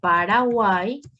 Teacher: yo tengo en esta palabra una vocal débil vocal fuerte y como la ye tiene la posición final entonces adopta el sonido vocal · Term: triptongo